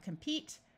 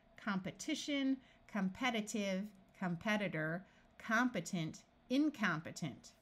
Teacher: Notice that when we start adding suffixes to the root compete, this long E becomes a short E sound.